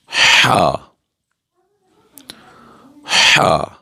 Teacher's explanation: یہ صاف آواز میں ہم پڑھیں گے وسط حلق سے یہ ہا ادا ہوگا